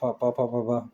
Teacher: फ व्यंजन का उच्चारण कहाँ से होता है? ओंठ से होता है।